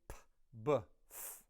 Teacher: if you add your vocal cords to that p sound, it becomes b. So you add your vocal cords to a unvoiced P and it becomes a beta. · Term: labials